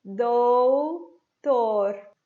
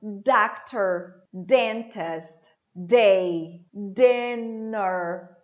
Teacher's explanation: eu pressiono a ponta da minha língua no céu da boca, atrás dos dentes superiores.